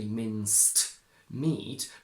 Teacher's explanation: the T between mince and meat disappears completely